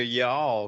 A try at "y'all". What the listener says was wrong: because I heard you try to say y'all. You need to work on the pronunciation of y'all. Yeah, too much L on the end of it.